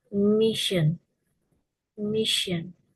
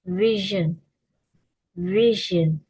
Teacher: Sh is voiceless palato-alveolar fricative, while zh is voiced palato-alveolar fricative. The difference is in voicing.